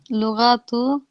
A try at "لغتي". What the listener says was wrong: It's got a ya on the end, doesn't it? A ya. So lughati.